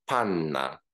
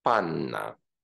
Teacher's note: because N is a sonorous consonant these two consonants should not be re-articulated but elongated